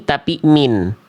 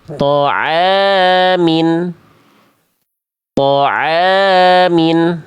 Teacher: Kalau baris bawahnya 1 kan dibacanya dengan vokal I. Kalau baris bawahnya 2 namanya kasroh tain, dibaca menjadi vokal I tapi pakai konsonan an di ujungnya. In. Maka Maka mimnya di sini kita baca bukan man, bukan mun, bukan ma, bukan mu, bukan mi, tapi min.